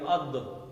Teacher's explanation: دال کا مخرج کیا ہے؟ زبان تالو کے ساتھ ٹکراتی ہے